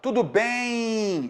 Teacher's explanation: esse M em final de palavra, ele tem um som de I. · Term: semivogal